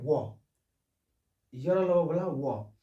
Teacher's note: वकार से दंतोष्टम, बस इसमें सिर्फ एक याद रखना है, वो बोला वो, तो वो का उच्चारण दांत और ओठ से होता है